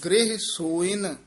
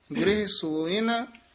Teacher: ਸਸੇ ਹੋੜੈ ਨਾ ਥੋੜਾ ਜਿਹਾ ਦੀਰਘ ਉਚਾਰਨ ਕਰਨਾ